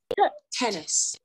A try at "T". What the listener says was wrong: Not T. धीरे से बोलना है. T नहीं बोलना है.